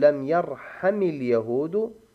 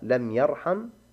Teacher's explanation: لماذا حركنا الميم بالكسرة؟ نقول حتى لا يلتقي ساكنان، وإلا فهي لم يرحم، علامة جزمه السكون.